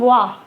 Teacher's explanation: लेकिन ये जो वा होता है ये अंतस्थ व्यंजन होता है जो या, र, ला, वा के साथ आता है, इसलिए इसको दंत ओष्ठ के अंतर्गत रखा गया है, क्योंकि इसका उच्चारण स्थान जो होता है वो ऊपर के जो दांत होते हैं हमारे, ऊपर वाले दांत और नीचे के ओठ के सहारे से इसको बोला जा सकता है ना, उसी की मदद से इसे बोला जाता है, जैसे वा। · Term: दंतोष्ठ